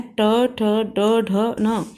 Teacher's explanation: इस ट वर्ग में जितने भी वर्ण हैं ट, ठ, ड, ढ, न, इन वर्णों को बोलते समय हमारी जो जीभ है, हमारी जो टंग है, वो मूर्धा को टच करती है, इसलिए इन्हें मूर्धन्य वर्ण भी बोला जाता है।